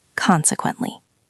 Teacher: Consequently, stress on the first syllable.